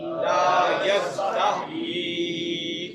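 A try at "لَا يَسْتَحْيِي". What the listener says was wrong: لا یستحیی ہا وہ ہا ہے، یعنی 2 چشمی ہا نہیں، حلوے والی ہا، لا یستحیی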